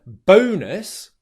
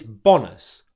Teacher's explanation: we're pronouncing the O diphthong where it lasts · One of the most common mistakes that people have difficulty with in English is pronouncing the O diphthong as a short O vowel sound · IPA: /əʊ/